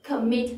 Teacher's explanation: Và cái từ này nhấn vào cái âm tiết cuối ấy, cho nên là chúng ta sẽ nhân đôi cái phụ âm lên và chúng ta thêm ed vào đằng sau, referred. Tương tự, commit cũng thế, từ này có hai âm tiết, nhấn âm tiết thứ hai và ở cái âm tiết cuối đó nó kết thúc bằng phụ âm, nguyên âm, phụ âm, chúng ta sẽ nhân đôi cái phụ âm cuối lên và thêm ed, committed.